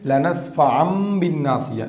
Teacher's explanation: تنوین اور نون ساکن کے بعد با آئے تو نون کو میم سے بدل کر پڑھیں گے، جیسے نون ساکن کے بعد با آ گیا تو پڑھے میم بین الصلبی، نون کو میم سے بدل کر دو زبر ہے تنوین، یہاں پہ لنسفعم بالناصیہ، دیکھیے دو زبر کے بعد میم آ گیا، با آ گیا، تو یہاں پہ بدل دیے لنسفعم بالناصیہ، نون کو میم سے بدل دیے۔